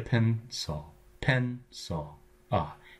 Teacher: Goes to a schwa because it's the unaccented syllable.